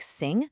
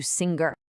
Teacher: the learner will often unconsciously stick a hard g sound at the very end just to compensate, turning sing into singer.